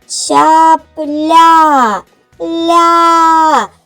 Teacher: Наступним після п чутно звук ль. Вимовляється м'яко. Значить, ль м'який приголосний.